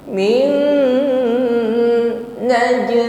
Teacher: Nun sukun bertemu huruf nun idgham bi gunnah. Jadi langsung ditekan, ya, ditahan, sempurnakan dengungnya, langsung fokus pada nun yang kedua. Min naj, jim sukun, maka tampakkan pantulannya, jangan ditahan.